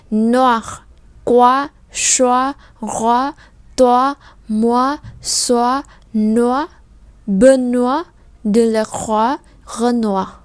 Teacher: Như vậy O-I trong tiếng Pháp thì sẽ giống với lại O-A-oa trong tiếng Việt. Như vậy đây không đọc là noi hay khoi hay choice hay roi hay toi, mà chúng ta đọc là oa.